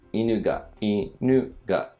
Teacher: Inu is low, high and then for the particle it goes back down. So inu ga. And then hoemashita is same, similar to ikimashita starts low, goes up up and then comes down for the shita.